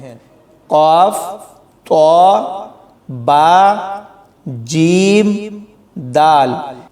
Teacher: یعنی ان کو پڑھتے ہوئے خوب قلقلہ کیا جاتا ہے، جیسے آواز لوٹتی ہوئی سنائی دے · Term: حروف قلقلہ